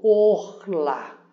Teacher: E aqui o shvá, que a gente chama de shiva, ele não é é uma vogal, ele é ele não é contado, ou seja, nós temos aqui um por isso que pronunciamos o orla. Or lá com eh sílaba tônica no lá.